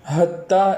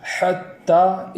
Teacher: اس کو ایک الف کے برابر کھینچ کر پڑھیں گے، اور حتی میں جو ہا ہے اس ہا کا بھی خیال رکھیں گے کہ وہ چشمے والی ہا کی طرح اس کی آواز نہ ہو جائے